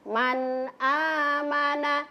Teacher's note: Jadi nun sukunnya tidak boleh dikasih dengung-dengung. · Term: izhar